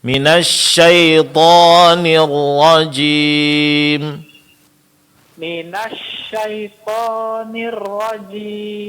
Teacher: mad alif setelah huruf tha dipanjangkan dua harakat saja